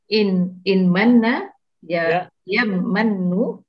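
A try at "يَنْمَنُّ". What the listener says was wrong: Yan manu. Ini bukan idgham ya. Ini harus jelas. Yan manu. Nun mati bertemu mim itu hukumnya idgham ya. Tapi kalau beda kata. Kalau satu kata, maka tetap idhar.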